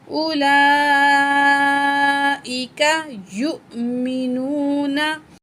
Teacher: 5 अलिफ के बराबर इस मद को खींच के पढ़ा जाता है, मद मुत्तसिल को।